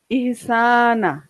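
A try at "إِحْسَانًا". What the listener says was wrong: হ্যাঁ ইহসান না, এই ইহসানান নাকে 2 জবর দেওয়া তো আমরা বুঝার জন্য ইহসানান,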